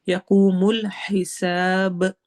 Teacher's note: آخر میں با میں ہماری آواز ہلے گی، ایکو ساؤنڈ ہوگی، اور اس کو ہم کلکلا کہتے ہیں۔